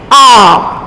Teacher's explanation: इन स्वरों के उच्चारण में ह्रस्व स्वरों से दुगना समय लगता है, यानी कि उससे दुगना समय लगेगा बोलने में, उन्हें हम दीर्घ स्वर कहते हैं।